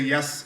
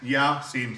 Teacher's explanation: we don't say yes here. We say Ya, Sin, separately.